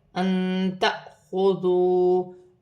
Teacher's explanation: الف پر جزم کی حرکت ہے، جھٹکے کے ساتھ پڑھا جائے گا